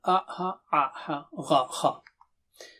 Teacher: From end of the throat, middle of the throat, upper throat. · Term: throat letters